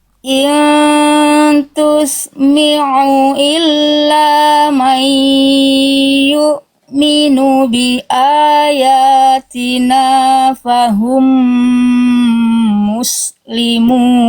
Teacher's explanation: Udah gak jadi hamzah tapi sengaunya masih ada sedikit. Nah, nanti tinggal dihilangkan bunyi nyirungnya, bunyi sengau hidungnya ya.